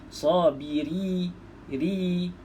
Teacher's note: Ra baris bawah baca nipis. Nipis tu kita senyumkan mulut.